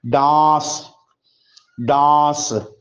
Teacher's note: डांस में नून को जाहिर नहीं करेंगे। डांस डांस ये नहीं बोलेंगे। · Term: नून गुन्ना